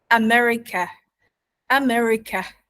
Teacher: the word America itself has two schwa sounds. At the beginning, America, America.